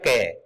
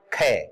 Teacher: ख में देखो सांस टकराए गी इसलिए ज्यादा फोर्स और ज्यादा सांस की जरूरत है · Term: महाप्राण